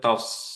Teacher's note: সো আপনার পড়তে হবে টস, back of the টাংটা elevated থাকতে হবে।